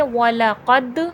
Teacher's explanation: دال حرف قلقلہ ہے، قلقلے کی صفات واضح ہوگی